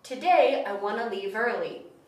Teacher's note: We combine the want and to and say wanna.